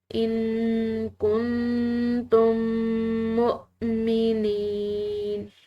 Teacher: دونوں میم کو آپس میں ملا کر ایک میم کی طرح پڑھا جاتا ہے